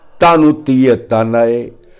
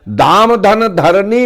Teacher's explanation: जैसे ता महाप्राण नहीं अल्प प्राण है, धा महाप्राण है।